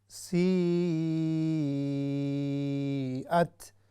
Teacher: یہ ہے مد متصل، یعنی اس کو ہم نے لمبا کر کے پڑھنا ہے پورا